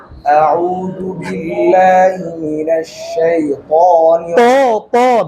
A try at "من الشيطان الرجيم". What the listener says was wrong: মিনাশ শাইতান শক্ত করতে হবে